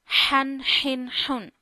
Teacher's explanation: This is a ha, soft one ha. It means you read this ha from the middle of your throat.